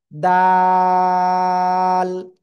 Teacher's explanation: জিহ্বার আগা ওই উপরে দুই দাঁতের গোড়ায় লাগান